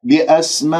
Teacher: اكسر الهمزة لا تختلس الكسرة